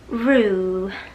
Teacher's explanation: 口型就比较收紧，就像吹口哨的口型是一样的